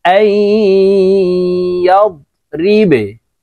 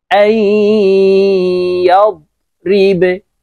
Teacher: বাকে যখন সাকিন করব তখন এইভাবে পড়ব, আইয়াব রিবে। বা যেহেতু কলকলার হরফ নিচের দিকে ধাবিত করে ধাক্কা দিয়ে কলকলা করতে হবে